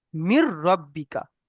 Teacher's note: তাই রর উপরে, রর মাথার উপরে তাসদিদ এসছে, তাই একে মিমের সঙ্গে মিলিয়ে পড়তে হবে। মাঝখান থেকে এই যে নুনটা বাতিল হয়ে যাবে।